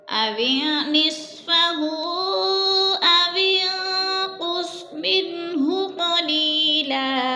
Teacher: اوین پہ اخفا ہو رہا ہے، نون ساکن کے بعد قوف حروف اخفا میں سے ہے تو غنہ کریں گے، ناک میں آواز لے جائیں گے